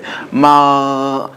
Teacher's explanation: Precede this going with a fatha, hamza that has a fatha, and make that one sakin and pronounce it. Continuous flow of air. There is no cut off of air like in the G in English. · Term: constant flow of air